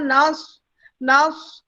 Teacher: ٹھیک ہے، تو 2 الف زا کے ہو گئے، 5 الف جا کے ہو گئے. اس کے بعد ہمارے پاس صاد کی آواز ہے، سین کی آواز میں نہیں جانا